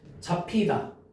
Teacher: 비읍 받침과 히읗이 만났지. 그래서 어떻게 됐어? 뭐로 바뀌었어? 피읍으로 바뀌었지. 맞아? 비읍의 거센 소리가 피읍이야.